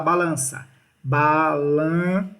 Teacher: a gente diz que aqui eu tenho um dígrafo vocálico porque esse n ele sai pelo nariz Ele é nasalizado